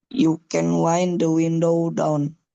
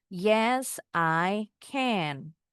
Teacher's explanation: Nah, kalau can sudah dalam kalimat bacanya jadi ken. Ken. Kalau can berdiri sendiri enggak ada kata lain di dalamnya ee di setelahnya bacanya can.